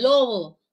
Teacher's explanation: la B entre vocales se debilita